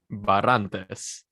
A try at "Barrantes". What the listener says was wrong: You got to roll your R's a little bit. You got to really let it like fly. Barrantes. There's like a flurry to it.